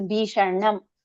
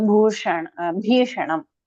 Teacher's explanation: So usually the Sha and the Na, they come as a pair. So Bhishanam. So you roll your tongue once to pronounce both of them. Sha and Na together.